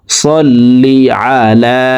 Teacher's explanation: সাললি সল্লি আলা আইন হরফকে হলকের মধ্যখান থেকে উচ্চারণ করতে হবে। আইন জবর আ লামের উপরে খারা জবর আছে তাই লাম হরুফকে এক আলিফ টেনে পড়বো